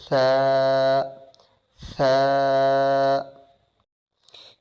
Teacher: ثا letter زبان کی نوک کو سامنے والے دانتوں کے درمیان میں رکھنے سے، اوپر اور نیچے کے دانتوں کے درمیان میں رکھنے سے ثا ادا ہوتا ہے، اور ثا جو ہے سافٹ ادا کیا جائے گا۔ اس میں سیٹی کی آواز بالکل نہیں ہوگی، بالکل سافٹ پڑھا جائے گا